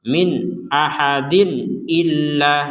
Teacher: nun sukun atau tanwin bertemu dengan Hamzah ini sama-sama dibaca dengan jelas